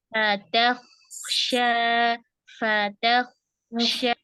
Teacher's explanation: fa-nya huruf tipis, ta-nya huruf tipis, kho-nya tebal, shin-nya tipis